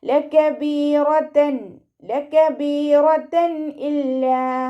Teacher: തെൻവീനിലുള്ള നൂനിൻ്റെ സൗണ്ടിനെ വ്യക്തമായിട്ട് കേൾപ്പിക്കുക.